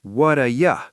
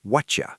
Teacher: In New York, what do you becomes what a ya, soft, smooth, lazy. In London, what do you becomes whatcha, sharp, aggressive, choppy.